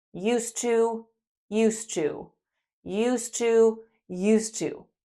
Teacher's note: With the positive and negative structures, adding D is only important in writing. When we are speaking, they sound the same.